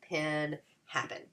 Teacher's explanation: notice how the vowel sounds get muffled and emptied when you read it again, and the second unaccented syllable in the 2-syllable word. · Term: schwa